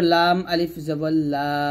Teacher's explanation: লাম জিহ্বার আগার কিনারা উপরের মারির দাঁতের সঙ্গে লাগবে